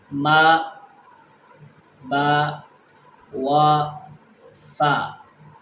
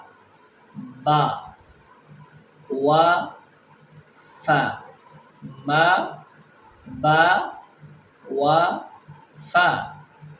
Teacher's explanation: یہ 4 حرف یہ ہمارے ہونٹوں سے ادا ہوتے ہیں